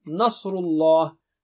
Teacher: na is thin, sad is very thick. Nasru is thick.